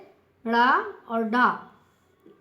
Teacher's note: उत्क्षिप्त व्यंजन, जिस व्यंजन के उच्चारण में जीभ की नोक झटके से नीचे गिरती है, तो वह उत्क्षिप्त व्यंजन कहलाता है